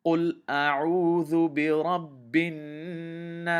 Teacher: I am holding the noon shadda in my nose a little bit. And the reason for that is whenever the noon has a shadda on it, we have to hold it in our nose a little bit. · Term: ghunna